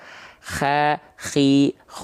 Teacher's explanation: kalau dia dilafalkan terlalu ke atas jadinya k nanti Kha khi karena k itu punya sifat hams yang berupa dengkuran seperti ngorok kayak ngorok walaupun bukan ngorok tapi kayak ngorok Kha khi khu begitu jadinya